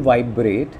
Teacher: vibe will not be stressed, it is the syllable rate that will be stressed.